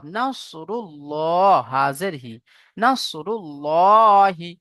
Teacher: আল্লাহ শব্দের লামের আগে পেশ এসেছে, তাই একে পুর করে পড়তে হবে, অর্থাৎ ল।